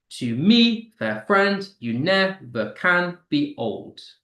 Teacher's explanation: So you get unstressed followed by stressed five times.